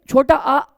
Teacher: ये छोटा आ मध्य स्वर है, ये जीभ के मध्य भाग से उच्चारित होता है